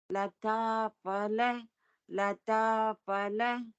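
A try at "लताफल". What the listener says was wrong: That phala, her has to be stressed. Lata Phala, has to be stressed.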